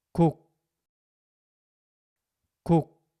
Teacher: my tongue stays pressed against the roof of my mouth at the end. It doesn't release. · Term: final consonants